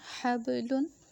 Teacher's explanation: ہا با زبر حب، لام دو پیش لن، حبلن۔ اب یہاں با کو میں نے ہلایا کہ یہ ہمارا حروف قلقلہ ہے